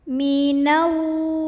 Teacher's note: Alif lamnya namanya alif lam syamsiyah karena alif lam ketemu sama huruf syamsiyah yaitu lam. Maka alif lam ini tidak perlu kita baca. Dari nun langsung tekan ke lam yang tasydid.